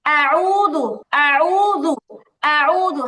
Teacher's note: হামজার মধ্যে টান দিছেন, টান হবে না